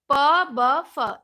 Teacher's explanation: बिल्कुल प वर्ग हमारा, उसका उच्चारण ही ओठ से होता है। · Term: ओष्ठ वर्ण